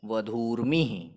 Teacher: दोनों दीर्घ उकारों को मिलाने पर नया दीर्घ उकार प्राप्त होता है और जो दूसरा शब्द बनता है संधि होने पर वह है वधूर्मिः।